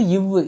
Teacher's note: மேல்வாய் பல்லின் கீழ் உதடு பொருந்துவதால் பிறக்கின்றது